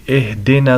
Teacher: صاد کو موٹا کر کے پڑھنا ہے، را موٹا کر کے پڑھیں گے